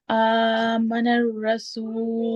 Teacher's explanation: کیسے میم کو جلدی سے پڑھیں، اور نون اور را کو آپ جو ہے ادغام کریں